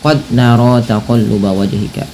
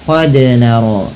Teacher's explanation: Pada lafal qad ada huruf dal yang berharakat sukun, maka pantulkanlah bunyinya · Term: qalqalah